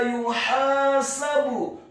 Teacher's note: huruf ya-nya dibaca tipis, dhamma 1 harokat